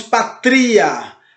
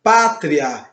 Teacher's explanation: Nós temos uma palavra pátria. E aí nós percebemos que o A ele tem uma presença maior do que o I. O I ele fica como um som mais em segundo plano, por assim dizer. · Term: ditongo crescente